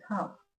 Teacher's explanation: the L in half is silent